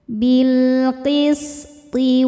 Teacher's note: sifatnya yang tidak memiliki lawan namanya sofir, ada desis seperti ular.